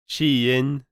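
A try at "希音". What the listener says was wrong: Wrong tones. No, that's the hardest part with Chinese.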